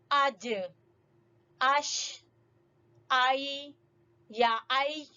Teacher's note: زبان کا درمیان والا حصہ جب اوپر تالو سے لگے گا، اوپر تالو سے ٹچ ہوگا تو ادا ہوں گے جیم شین یا · تو ہماری زبان کا درمیان والا حصہ اوپر تالو سے ٹکرا رہا ہے اور اس کے مخرج کی ادائیگی ہو رہی ہے.